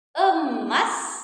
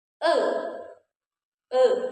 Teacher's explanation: Selanjutnya kita punya bunyi vokal e madya atas tengah